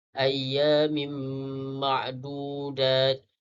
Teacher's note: Ayyamin ma'dudat, merupakan idgham al-qunna, perlulah dibaca dengung 2 harakat. Dan ma'dudat ma'arif sukun, perlulah dibaca 2, 4 atau 6 harakat.